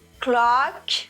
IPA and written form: klɑːk (clock)